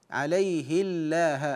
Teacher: ومن اوفى بما عاهد عليه الله حيث قراها ورش بكسر الهاء ويلزم من كسر الهاء هنا يلزم ترقيق لام الجلال